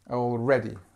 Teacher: So this is where you put the stress on the second syllable